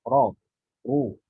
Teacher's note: Ro baik itu berharokat fathah ataupun dhammah, dia pasti tafkhim.